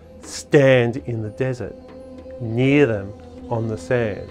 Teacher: The trochee puts the stress on stand, emphasizing the strange sight of these two legs and nothing else sticking up out of the flat desert.